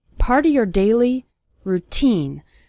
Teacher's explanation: the syllable teen is stressed in the word routine